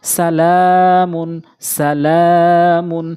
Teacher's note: সিন এটি টানা যাবে না, লাম ১ আলিফ টানতে হবে। মিম টানা যাবে না, দ্রুত পড়তে হবে। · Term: মদের হরকত